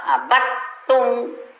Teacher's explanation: dal sukun masuk ke ta, jangan dibaca dal, abattum. Jadi suara ta yang ada.